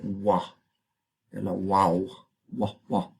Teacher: tiene una doble articulación es labial los dos labios pero también es velar así tiene dos puntos de articulación